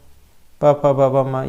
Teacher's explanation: एक और दूसरे ओठ से जो आपस में मिलता है स्पर्श करता है। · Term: ओष्ठ